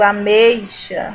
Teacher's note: o E é pronunciado de maneira mais forte e o I tem um som mais fraco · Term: ditongo decrescente